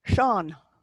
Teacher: In the EA, you're reaching for the broad A, not the E in front of it.